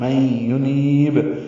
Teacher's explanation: ادغام ناقص ہے غننے کے ساتھ، میں ینیب، نون کو لمبا کریں گے، نی یا مدہ ہے اور با ساکن پہ قلقلہ ہوگا، میں ینیب، یہ وقفاً قلقلہ ہے۔